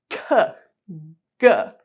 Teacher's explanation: sounds that are produced by pressing the back of your tongue up against the back of the roof of your mouth, before it becomes your soft palate. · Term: /k/ and /g/ sounds